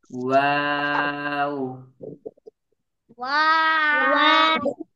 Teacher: দুই ঠোঁট গোল করে ওয়াও উচ্চারিত হয়।